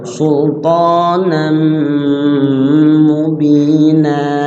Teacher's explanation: sultanan tanwin ketemu mim idgham bi gunnah. Dibaca gunnah di situ.